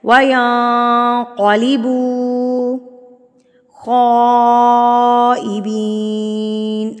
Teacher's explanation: بڑی مد ہے، مد متصل، جس کو ہم نے 4 حرکات کے برابر لمبا کرنا ہوتا ہے، اور اس کی پہچان ہوتی ہے کہ اس مد کے فوری بعد یہ والی حمزہ آتی ہے.